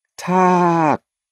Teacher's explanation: the ah vowel is a long sound, so that means we have a fat ladyboy. So the tone becomes melodramatic or energetic.